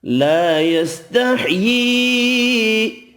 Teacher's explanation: الف مدہ ایک الف کی مقدار میں کھینچ کر پڑھیں گے، چھوٹی مد 3 الف کی مقدار میں کھینچ کر پڑھیں گے۔